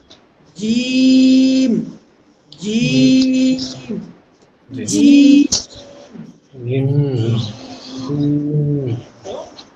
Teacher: জিমের মাখরাজটা বা উচ্চারণের স্থানটা বলেছিলাম আপনার জিহ্বার মধ্যখান। জিহ্বার মধ্যখান তার বরাবর যে তালু আছে সেই তালু থেকে লাগবে।